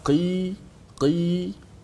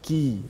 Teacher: Kerana kaf di depan sedikit pada qaf. Kalau qaf di pangkal lidah, qi, kaf, ki di depan sedikit. Maka huruf ni jangan terlalu ringankan sangat.